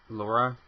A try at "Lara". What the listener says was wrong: Lara, not Laura. Laura is L-O-R-A. It's L-A-R. It is Lara Croft, not